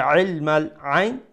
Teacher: from the middle of the throat make sure you pronounce it so that it does not sound like Hamza